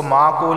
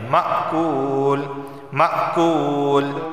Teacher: کعصفم کعصفم مأکول، اس کو معقول نہیں پڑھیں گے بلکہ مأکول، میم حمزہ زبر ما جھٹکا بھی دیں گے، مأکول مأکول، کاف واو پیش کو ایک الف کے برابر اسے کھینچ کر پڑھا جائے گا۔